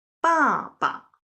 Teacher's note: The latter one, 爸, is pronounced very lightly. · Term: neutral tone